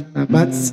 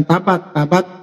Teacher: tabats karena sifat huruf ta itu adalah harus keluar angin. Makhraj ta itu adalah adanya di ujung lidah ketemu dengan gigi seri atas.